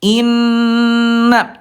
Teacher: Jadi biar Bunda tidak bingung ayah Bunda samakan aja semua guna huruf yang keluar dari hidung samakan aja ditahan dua ketukan lambat dan didengungkan